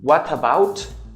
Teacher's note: connect and transform the T in to an R